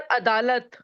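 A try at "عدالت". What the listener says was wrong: अदालत में ऐन है। अदालत, अदालत एग्जैक्ट वर्ड है, अदालत। ऐन निकालना पड़ेगा। एग्जैक्ट वर्ड है आदत, अदालत, नोट अलीफ।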